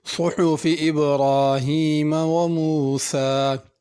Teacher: صحف میں صاد کو سین نہیں پڑھنا، حا بڑی ہے، اس کو ہا نہیں پڑھنا۔ موسیٰ آخر میں کھڑی زبر ہے، اس کو کھینچنا ہے۔